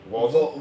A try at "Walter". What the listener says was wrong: No, it's spelled Walter, but it's Volter.